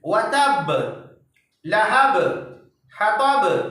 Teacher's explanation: देखिएगा आवाज को, देखिएगा बा की आवाज टकरा करके, दोनों होंठ में टकरा करके आवाज अलग हो जा रही है। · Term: कलकला